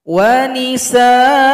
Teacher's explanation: hamzah yang fathatain 2 baris di atas, barisnya hilang 1, dipanjangkan 2 ketukan.